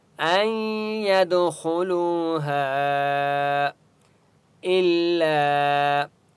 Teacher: الا الف مد ہے لام کو ایک الف کی مقدار کھینچ کر پڑھیں گے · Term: چھوٹی مد